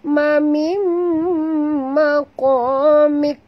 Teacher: Nun mati bertemu mim, idgham ma'al gunnah. Jadi tak berbunyi nun ini ya sahabat, sebab kita idghamkan dia. Terus masuk bunyi mim ini ke dalam mim berikutnya.